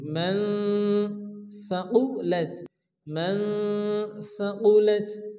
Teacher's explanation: নুন সাকিনের পরে হরফে ইকফার 15টি অক্ষরের মধ্যে থা আসছে, এর জন্য এখানেও এক আলিফ মান ইকফা করে পড়তে হবে। মান সাকুলাত, মান সাকুলাত।